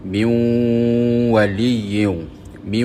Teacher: Kita ambil contoh nun mati bertemu dengan huruf wau bunyinya min waliyu mi so bunyi nun itu hilang dan dia masuk ke dalam huruf wau dengan dengung dua harakat ya. Jadi idgham bighunnah bermakna kita memasukkan bunyi nun ke dalam huruf selepas dengan dengung. · bunyi nun itu hilang dan dia masuk ke dalam huruf waw dengan dengung 2 harakat. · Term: idgham bi gunnah